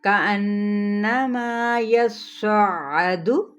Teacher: مدہ، یصعد، اب غور سے سنے گا، کأنما یصعد، یصعد یعنی یا کی زبر کو صاد کے ساتھ اور صاد کی زبر کو عین کے ساتھ ہم نے ملانا ہے تشدید کی وجہ سے ، یس پہلے یا زبر صاد، یس صاد زبر عین، سع